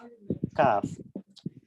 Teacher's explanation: ছোট কাফ সেটা পাতলা উচ্চারণ হবে এবং গোড়া থেকে একটু সামনে বাড়ালে এবং ওই অংশটা তার বরাবর উপরে তালুর সঙ্গে লাগা